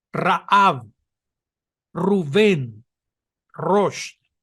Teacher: Los árabes que hablan hebreo la pronuncian como una doble R.